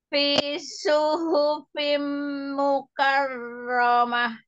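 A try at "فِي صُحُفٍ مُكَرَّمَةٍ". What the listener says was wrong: Tim itu di dengungnya panjang. Iya, panjang.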